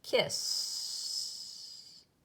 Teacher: where your throat doesn't make that little shaky feeling like kiss it's just more like just air hissing there but no vibration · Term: sound that doesn't move